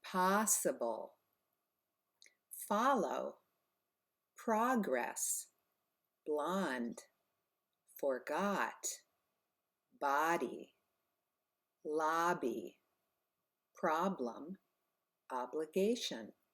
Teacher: Sometimes, very often actually, the letter O can be pronounced ah, like ah, open your mouth.